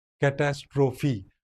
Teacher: Greek words have this characteristic feature that the last syllable, last vowel sound is pronounced.